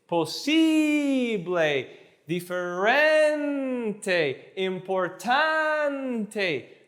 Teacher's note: You're always rising up on the penultimate syllable, the before last syllable, and then you're landing gently on the ending